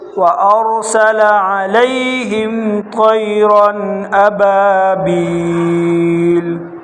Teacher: را موٹا، طا بھی موٹا، را دو زبر رن پر غنہ کریں گے، ابابیل۔